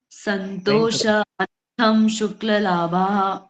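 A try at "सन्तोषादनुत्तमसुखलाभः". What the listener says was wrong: शुक्ल लाभ नहीं सुख लाभ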